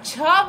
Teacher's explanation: जब झ बोलेंगे तो मुख अधिक खुलेगा और मुख से वायु यानी कि हवा भी ज्यादा निकलेगा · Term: महा